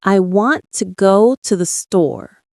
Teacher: The strong beats are want, go, store. The small words like to, the just help the rhythm flow.